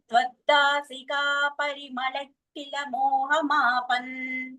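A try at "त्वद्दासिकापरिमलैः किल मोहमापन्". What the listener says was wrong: పరిమళై ఇలా అన్నది స్పష్టంగా రావట్లేదు, వినిపించట్లేదు నాకు. నాకు విసర్గలు వినిపించాలి. ఏహెచ్కే అలా వినిపించాలి.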